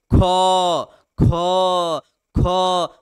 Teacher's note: उच्चारण दृष्टि से ख ख ख मतलब ह की हल्का मात्रा आती है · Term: महाप्राण